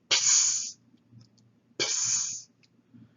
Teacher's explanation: So letter C is what we would call a label sibilant. So you press your lips together, stop the air, but then as you let the air go out, you combine it with a hissing sound. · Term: Psi